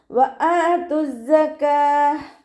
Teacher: വാവ് ഉച്ചരിക്കുമ്പോൾ ചുണ്ടുകളൊന്ന് വട്ടത്തിൽ പിടിച്ചു കൊടുക്കുക. ഹംസയുടെ കൂടെ അലിഫ് മദ് വന്നു 2 കൗണ്ട് നീട്ടി കൊടുക്കുക.